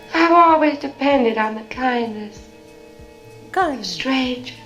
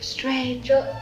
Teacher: You hear how there's no R in strangers? Stranger. That's a non-rhotic accent.